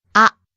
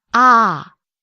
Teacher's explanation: the AH vowel can be either short one syllable ah or it can be long two syllables ah and these are two distinctly different sounds whether vowel is long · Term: long vowels